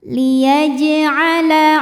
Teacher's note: Huruf jim dihukumi dengan qalqalah sughra, karena jim ini sukunnya sukun asli dan ada di tengah bacaan. Maka dibaca dipantulkan dengan pantulan yang kecil.